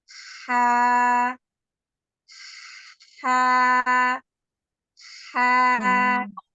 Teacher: pengucapan huruf ha yaitu katup epiglotisnya itu terbuka ya dia terbuka menjauh dari dinding tenggorokan